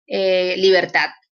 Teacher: la última sílaba, que es tat, es donde recae la sílaba tónica. O es la sílaba tónica porque es donde recae la mayor fuerza de voz, quise decir. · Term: acento prosódico